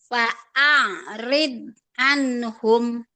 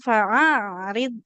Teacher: Hamzah jangan dulu makhrajnya di tengah tenggorokan. Dari pangkal dulu hamzahnya baru naik ke tengah tenggorokan masuk ke ain sukun